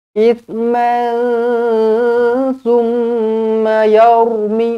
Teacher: ra dibaca tebal kerana sebelumnya berbaris atas